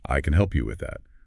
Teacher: The stress on can emphasizes your willingness.